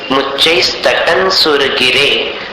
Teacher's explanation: मुच्चैस तटन न जैसा उच्चारण होगा अनुस्वार का